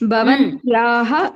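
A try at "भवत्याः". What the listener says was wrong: Bhavatyaha Nakara is not there. Bhavatyaha.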